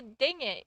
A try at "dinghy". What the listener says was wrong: Dingy, it's just dingy. The H is silent. Dingy,